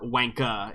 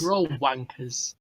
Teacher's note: You don't pronounce the R's